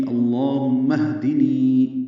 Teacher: اصل میں یہ اہدنی ہے، اہدی کا حمزہ عارضی ہوتا ہے، اس لیے اللہم اہدنی، نی یا مدہ ہے، دو حرکات لمبا ہے